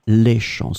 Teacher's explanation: it's the plural form, les champs, with the S in the end, but it's still the same pronunciation because we don't pronounce the final S